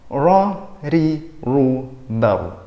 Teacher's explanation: Cara pengucapannya adalah dengan mempertemukan ujung lidah dengan langit-langit mulut bagian depan. Mirip dengan zal secara posisi lidahnya. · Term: huruf ro